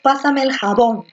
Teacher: la fuerza de voz está en la última, está en bon. Como la fuerza de voz está en la última sílaba, se llama aguda.